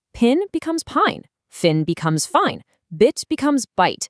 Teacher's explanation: Can you hear how that short sound magically stretches out into a long sound?